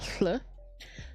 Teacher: You're kind of saying like an L sound out the side of your mouth, but if you had like cotton balls stuck in it, it takes a lot of practice to get it even slightly right. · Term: the more Welshy sound